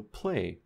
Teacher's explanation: after P and after K well these are voiceless stops so after voiceless stops we get a voiceless L so play there's no voicing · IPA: [l̥]